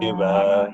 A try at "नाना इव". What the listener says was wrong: नाना इव not एव नाना इव पश्यति